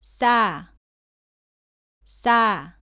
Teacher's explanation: 쌍시옷은 시옷을 두 번 겹쳐 씁니다. 발음은 사와 비슷한데 목에 힘을 주고 조금 더 세게 발음합니다. 공기가 나오지 않도록 발음합니다.